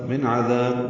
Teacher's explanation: من عذاب نون ساکن کے بعد عین آنے کی وجہ سے اظہار ہے